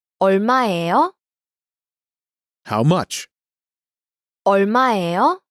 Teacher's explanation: Notice the rising intonation to indicate a question.